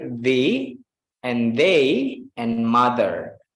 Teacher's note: dia lidah di antara dua gigi tapi tidak ada udara yang keluar. Nah, itu kayak D tapi bukan D dalam artian lidah teman-teman di dalam, tapi tetap di tengah, di antara lidah, di antara gigi teman-teman, lidah di antara dua gigi.